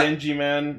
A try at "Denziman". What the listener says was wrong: Not Denji Man, Denzi Man. There's a Z, not a J.